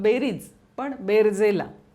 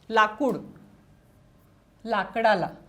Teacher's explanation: कूचा इथे क झाला, बेरीजमधला रीचा इथे र झाला.